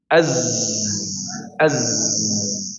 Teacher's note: Maka sifatnya adalah berdesis ya. Dan huruf Z ini menggetarkan di area gigi ya. Kalau kita membaca dengan disukunkan maka menggetarkan di di area gigi-gigi.